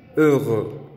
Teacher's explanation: Feliz de estado de ánimo, que se dice heureux. Esta es la pronunciación de la E marcada con labios redondeados.